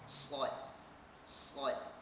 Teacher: Makhraj huruf sad ialah hujung lidah ditekan pada belakang gigi gunting sebelah bawah